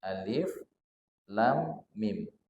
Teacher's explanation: lam ini panjangnya 6 harokat saja tak lebih panjang dari 6 harokat jadi dalam Alquran itu yang